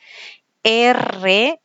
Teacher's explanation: La que más conocemos nosotros es la vibrante, ¿ya? Y aquí la lengua vibra. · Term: vibrante múltiple